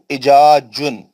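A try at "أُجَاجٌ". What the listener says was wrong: उजा पेश है यार।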